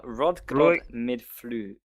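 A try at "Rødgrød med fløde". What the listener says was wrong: No, you're pronouncing too many of the D's. It's Rodgrod.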